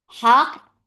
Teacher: the next Qaf will have Qalqala. And that qalqala will be very clear.